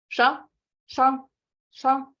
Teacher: Мягкая, то есть это не ща все-таки, да, но вот нечто среднее между ща и ша. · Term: ша высокая